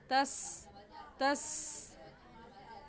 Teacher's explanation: जब आप पढ़ेंगे तो सीटी की आवाज़ आएगी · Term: सीटी वाले हरूफ